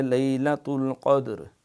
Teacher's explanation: را بھی ساکن ہے وقف بالاسکان کی وجہ سے، دال بھی ساکن ہے اور اس کے پیچھے قاف ہے، اس کے اوپر زبر ہے، تو لہٰذا یہ را موٹی پڑھیں گے، اس کو کہیں گے، اس کو تفخیم سے پڑھیں۔